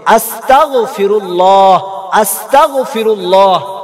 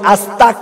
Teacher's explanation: এখানে কাফ নয় গয়েন উচ্চারণ হবে, আস্তাগফিরুল্লাহ আস্তাগফিরুল্লাহ, যেখানে হবে গয়েন সেখানে আমরা কাফ উচ্চারণ করি আস্তাক বলি, এটা ভুল।